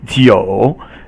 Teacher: the next character is in third tone, and is wine or alcoholic beverages